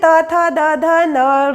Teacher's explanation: इसका उच्चारण स्थान है दांत, अर्थात इसे दंत्य वर्ण कहा जाता है